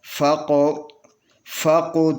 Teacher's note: اس کی آواز اپنے مخرج میں اس کے اوپر جنبش ہوگا. اس کی آواز پر اپنے مخرج میں آواز میں جنبش ہوگا، تو یہ ایسا لگے گا کہ جیسے قاف ڈبل پڑ گیا ہے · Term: قلقلہ